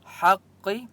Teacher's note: حق ہا کی آواز حلق سے نکالیں گے. قاف مستعلیہ میں سے اس لیے قاف کو موٹا پڑھیں گے.